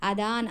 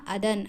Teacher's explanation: ಅದನ್ ಅಳಿಯುವವನಿಗೆ ಅಂತ ಬರೀಬಹುದಾಗಿತ್ತು ಅಲ್ವಾ ಆದರೆ ಅವರು ಅದಾನ್ ಅಳಿಯುವವನಿಗೆ ಅಂತ ಮಾಡಿಕೊಂಡಿದ್ದಾರೆ ಪೂರ್ವದ ಹಳಗನ್ನಡದಲ್ಲಿ ದೀರ್ಘ ಸ್ವರವಾಗಿರೋದನ್ನ ಹಳಗನ್ನಡದಲ್ಲಿ ರಸ್ವ ಸ್ವರವಾಗಿ ಮಾರ್ಪಾಡು ಮಾಡಿಕೊಂಡಿದ್ದಾರೆ ಅದಾನ್ ಅನ್ನೋದನ್ನ ಅದನ್ ಅಂತ ಮಾಡಿಕೊಂಡಿದ್ದಾರೆ ಷಷ್ಟಿ ವಿಭಕ್ತಿ ಪ್ರತ್ಯಯನು ಅಷ್ಟೇ ಅಕಾರಕ್ಕೆ ಬದಲಾಗಿ